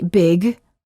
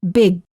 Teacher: hold the final g Sound by making sure that your tongue remains up in the back of the mouth